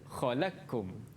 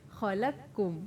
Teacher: Adghamal qafa fil kafi. Qaf tu idgham masuk ke dalam kaf.